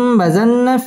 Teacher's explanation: হরকতের বামে নুনের মধ্যে তাসদীদ আসছে গুন্নাহ করে পড়তে হবে